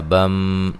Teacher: نون تنوین کا ادغام ہے، ادغام مع الغنہ ہے